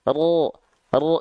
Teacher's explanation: Salah satunya yang hanya khusus dimiliki oleh huruf ro adalah nama sifatnya takrir. Takrir itu dia tetap bergetar, tapi bukan getaran yang terlampau berlebihan sebagaimana kita melafalkan huruf R.